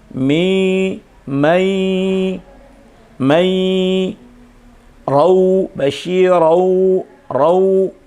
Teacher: ketika nun atau tanwin bertemu dengan waw atau ya, itu berubah menjadi waw. Mi, mai, mai, rau, basyirau, rau, berarti tanwinnya berubah menjadi waw.